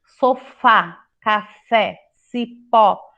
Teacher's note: nós temos então a última sílaba forte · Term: oxítona